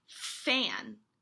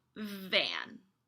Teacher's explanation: Both f and v are produced by biting the lower lip and blowing out. F and v only differ in their voicing. Remember, voicing is when your vocal cords vibrate.